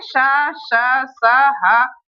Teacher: इसमें बोलने में जो गर्म हवा निकलती है, रगड़ के जो गर्म हवा निकलती है उसे ऊष्म व्यंजन कहते हैं